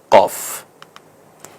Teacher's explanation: একটু জিহ্বার গোড়ার অংশের দিক থেকে কফ একটু গম্ভীর আওয়াজে